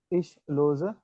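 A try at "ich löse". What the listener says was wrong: ल्योजर, ल्योजर, थोड़ा सा तो ओ लगाओ उसके अंदर।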